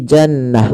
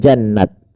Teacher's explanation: dia rubah atau dirubah menjadi huruf ha sukun, maka menjadi jannah, bukan jannat, tapi jannah